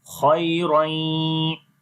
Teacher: خا یا زبر خوئی، را یا دو زبر رائیں، خیرین. تو یہاں پر ادغام ود غنہ ہو رہا ہے